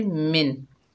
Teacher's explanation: नून साकिन को ज़ाहिर करके पढ़ेंगे। इजहार हलकी का कायदा होगा, गुन्ना इफ़ा कुछ भी नहीं होगा।